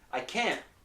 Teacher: in this case the T is not released